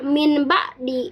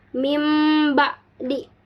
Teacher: merubah bunyi tanwin atau nun mati menjadi m apabila nun mati dan tanwin menghadapi ba. Nah, kaidah membacanya yaitu bunyi nun mati atau tanwin diganti atau ditukar menjadi suara mim disertai dengan degungan karena bertemu dengan huruf ba atau ba ya. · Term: iqlab